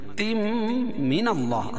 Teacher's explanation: اللہ کے لام سے پہلے زبر ہے تو اللہ کا لام پر پڑھا جائے گا، موٹا پڑھا جائے گا